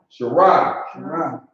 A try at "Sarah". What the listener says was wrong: No, Sarah. It's not an H. It's a Sarah. Sarah. Sarah. I hear H a little bit.